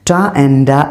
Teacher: Ta and da are known as the alveolar plosive, formed by the plate of the tongue, making contact with the alveolar.